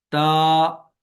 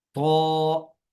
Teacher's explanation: تو تا کے بارے میں آپ نے پڑھا ہے کہ تا کو باریک پڑھا جاتا ہے اور طا کو موٹا پڑھا جاتا ہے۔ تا کو پڑھتے وقت زبان کی جڑ کو نیچے رکھیں گے، اور طا کو پڑھتے وقت زبان کی جڑ کو اوپر اٹھائیں گے۔